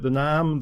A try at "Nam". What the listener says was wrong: Sounds like you're saying name in a really bad Northern Irish accent. The Nam. The Nam.